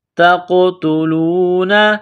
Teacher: تا کو قاف کے ساتھ ملائیں گے، قاف کو موٹا کریں گے، قاف ساکن ہے تو یہاں قاف پر قلقلہ کریں گے، جھٹکا دیں گے۔